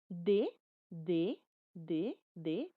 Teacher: la punta de la lengua contacta con la cara interna de los dientes superiores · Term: dentales